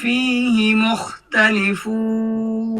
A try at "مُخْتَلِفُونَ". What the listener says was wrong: মুখতালিফুন হইল না তো, মিমটা তো গোল করতে হবে বেশ। মুখতালিফুন। মিমটা একদম গোল করে দেন। মুখতালিফুন।